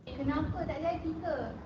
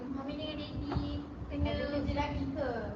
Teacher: mengubah sebutan ayat dengan menggantikan vokal A pada akhir suku kata dengan vokal E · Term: dialek bahasa Melayu standard selatan